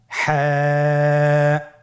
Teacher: হা হরফটি কিভাবে উচ্চারিত হবে? হা হরফটি উচ্চারিত হবে কন্ঠনালীর মধ্যখান হতে। গলা চিপে ধরে আপনি উচ্চারণ করুন।